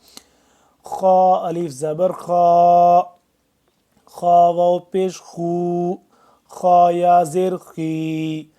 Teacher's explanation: خا کو بھی ہم گلے سے نکالیں گے ذرا زور سے